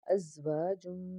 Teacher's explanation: میم کے اوپر تشدید غنہ کریں گے